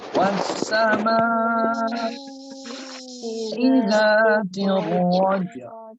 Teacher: jimnya ada qalqalah, tapi dia tidak di akhir kalimat itu, tapi tetap harus diqalqalahkan